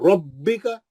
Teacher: با پہ تجدید ہے, با دو بار پڑھ جائیں گا